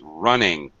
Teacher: It has to be an I sound. I don't say runung. I don't use the schwa sound.